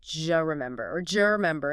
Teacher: The J sound in judge. And the vowel in U often reduces to schwa or disappears · The D sound at the end of do and the J sound like Y in yes at the beginning of you often merge together. D plus Y, just. · And the vowel in U often reduces to schwa or disappears. So, do you remember can absolutely sound like j remember or jer remember in rapid casual conversation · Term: assimilation and reduction combined